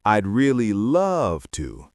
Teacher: notice how the word love is stretched out. You do not say, I'd really love to. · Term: vocal stretch